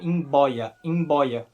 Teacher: ao português por exemplo imb boia imb boia significa cobra e nesse caso o b é é bilabial